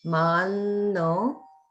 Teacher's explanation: I'm not sure if there was a little bit of skipping in the Zoom stream, so it might not be you, but just make sure that mano, the a is dirgha, the o is dirgha, and there's also the holding on in mano.